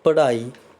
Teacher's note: ਰਾੜੇ ਦੇ ਪੈਰ ਦੇ ਵਿੱਚ ਹਲਕੀ ਜਿਹੀ ਹਾਹੇ ਦੀ ਆਵਾਜ਼ ਆ ਰਹੀ ਹੈ।